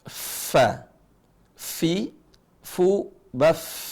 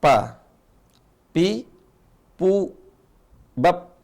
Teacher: huruf Fa itu keluarnya gigi seri atas ketemu bibir bawah